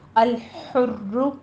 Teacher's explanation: را کے اوپر ضمہ ہے، اس کو تکرار کے ساتھ پڑھیں گے، شد والا ضمہ ہے تو ہم نے اس کو پر پڑھنا ہے اور تکرار بھی ہوگی۔